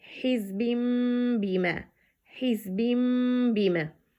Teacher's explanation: The second kasra that represent nun الساكن, nun, in, been changed to mim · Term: iqlab